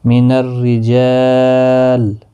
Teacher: یہاں پر را باریک پڑھا جائے گا زیر کی وجہ سے